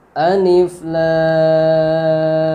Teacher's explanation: lemnya ini dipanjangkan sampai 6 harakat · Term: mad lazim Harfi